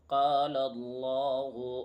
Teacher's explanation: لفظ اللہ سے پہلے لام پر زبر ہے تو اس لفظ اللہ کے لام کو بھی پر پڑھیں گے